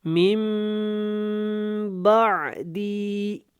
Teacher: نون ساکن کے بعد با آ گیا تو یہاں پہ اقراب ہوگا غنہ کے ساتھ